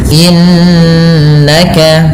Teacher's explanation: Innaka, pada bacaan innaka ada nun yang berharakat tasydid. Ini ditahan dengan bacaannya 2 harakat dengan menahan bunyi n-nya, yang kita kenal dengan istilah yaitu gunnah.